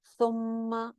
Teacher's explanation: मीम शद के ऊपर हमेशा गुन्ना होता है, सुम्मा एक अलिफ के बराबर गुन्ना करेंगे और मीम की जबर को छोटा सा पढ़ना है।